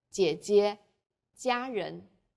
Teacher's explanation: J is like the J in Jeep, but press your flat tongue tightly against the back of your upper teeth.